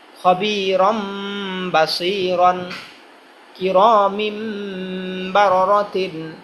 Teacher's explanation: আবার তানবিনের মধ্যে যে নুন লুকাইতেছে সেটাকেও মিম দ্বারা পরিবর্তন করে ফেলতে হবে।